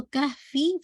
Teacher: کہفی فا کی کسرہ لائٹ رکھیے گا